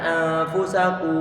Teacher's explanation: Harokatnya ku, dhammah ku. Pengucapannya ku kita monyongkan. Di saat bukan dhammah maka dalam keadaan datar.